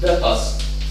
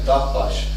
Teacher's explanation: here we have a voiced consonant, and in the Luwian case, in the initial position, we have a voiceless consonant